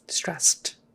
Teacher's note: Jazzed, but stressed, even though the proper spelling is ED, because S is unvoiced, we now will typically pronounce that final D as a T